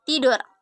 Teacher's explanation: Bunyi T dengan ciri-ciri mati, oral, apikodental, plosif dengan contoh kata tidur.